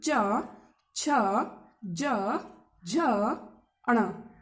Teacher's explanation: तालु कहाँ होता है, दांत के पीछे, मसूड़ों के पीछे, जो जहां पर जीभ हमारी जाकर अगर लगे तो वो तालु होता है। तो आप बोलकर देखिए च, तो जीभ जाकर ऊपर लग रही है वहां दांतों के पीछे, मसूड़ों के पास।